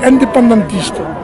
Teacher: I can't do it. Like they almost pronounce the N, where we do more of a, in the north of France, we do more of a nasal thing, a nasal sound